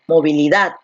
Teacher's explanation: Entonces la fuerza de voz está aquí en dat. Y como la fuerza de voz está aquí en la última sílaba, entonces aquí estamos ante una aguda